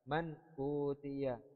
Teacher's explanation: Kita tidak boleh membaca secara mendengung atau secara ikhfa.